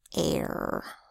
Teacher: in the AR phonogram, you hear more of a long A before the R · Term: R-controlled long A